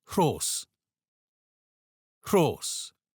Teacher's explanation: Roll your R and add a breathy sound.